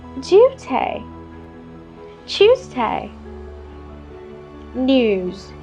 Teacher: Notice how the British add a y sound before a vowel.